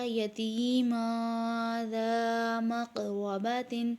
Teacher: اس میں آپ دیکھ سکتے ہیں تنوین کے بعد ذا ہے، اس لیے اخفا کیا